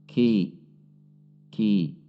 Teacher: Huruf kaf ada sedikit dorongan udara saat mengucapkannya